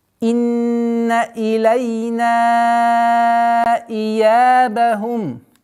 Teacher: «Инна» – четкое произношение кесры, удержание, нун, удержание назализации в размере двух огласовок, и после удержания четкое произношение кесры.